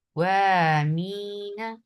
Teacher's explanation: جب قاف کو واو کے ساتھ ملا رہے ہیں تو نبر کر رہے ہیں